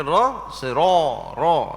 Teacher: tu iki ihdin ro tu pun buka juga tapi oleh kerana ra tu dia ada sifat dia yang lain yang mengiringi baris fathah iaitu sifat tafkhim sifat tebal